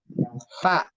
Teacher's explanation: Gigi seri bawah ketemu bibir bagian atas, bukan. Tapi gigi seri atas ketemu bibir bawah bagian dalam. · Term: huruf fa